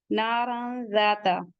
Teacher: तनवीन के बाद हुरूफ इख्फा से जाल आया हुआ है, इख्फा करेंगे। नारन ज़ाता, जाल के बाद का अलिफ भी पढ़ा जाएगा।